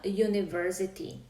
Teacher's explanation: Píše sa ako u, teda píšeme tam samohlásku, ale vyslovujeme spoluhlásku. Vyslovujeme to j. Počujete na začiatku j.